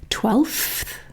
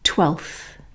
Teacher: But realistically, to make it easier, what I would normally say is I would normally get rid of that F sound and just go straight from the L to the TH. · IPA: /twelθ/